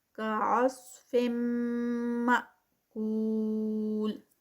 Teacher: تنوین کے بعد میم میں مرج ہو رہی ہے تو یہ ادغام ہے